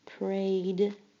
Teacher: Prayed sounds just like it has only a d at the end, but it has an ed.